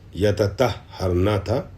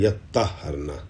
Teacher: تے کو تو سے ملا دیا گیا ہے، بدل دیا گیا اور ادغام ہو گیا ہے تو کا تو میں.